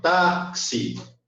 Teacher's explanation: o tá é mais forte. Então, automaticamente, aí você tem a sílaba tônica no tá